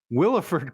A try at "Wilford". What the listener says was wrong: I think you pronounced his name wrong. I think it's just Wilfred. I don't think it's Willifred.